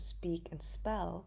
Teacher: when it is not in the beginning of the word such as the examples of speak and spell we do not see the aspirated p